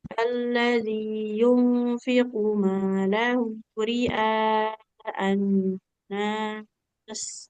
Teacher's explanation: Di sini qafnya nggak boleh panjang